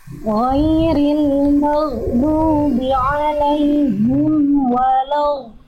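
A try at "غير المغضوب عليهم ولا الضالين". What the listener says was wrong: Tinggal disempurnakan di bagian goin sukun dan mimnya, goinnya kuatkan lagi goinnya, alirannya, suaranya, dan mimnya tipis. Lalu huruf dotnya dialirkan suaranya. Ghairil maghdubi alaihim waladhdallin.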